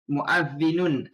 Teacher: Kita nun tu kita sebut betul-betul. Dia tak ada dengung, dia tak ada idgham, dia baca betul-betul seketul betul muazzinun. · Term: izhar halqi